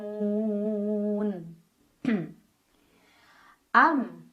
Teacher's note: mim sukunnya dibaca secara jelas bunyinya masih bunyi asal dan tidak perlu kita tahan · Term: izhar syafawi